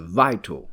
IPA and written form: ˋvaɪt! (vital)